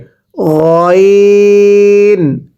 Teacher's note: এবার গলার মাঝখান থেকে উচ্চারণ হবে গইন